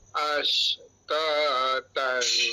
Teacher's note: >> Panjang sikitlah pada taat ta ni panjang sikit. Asan ta hukumnya adalah mad asli dua harakat kat situ